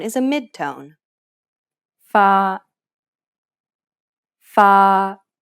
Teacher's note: it's pronounced in the middle of your range and is steady throughout · the key here is to maintain the same pitch from start to finish and keep it even across the entire syllable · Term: third tone